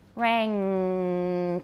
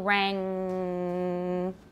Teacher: the air is prevented from going out through the mouth but is able to go out through the nose because the soft palate or vellum is lowered